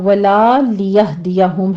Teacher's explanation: لام کا پورا الف مد ادا کیجیے گا ورنہ معنی بالکل چینج ہو جائے گا۔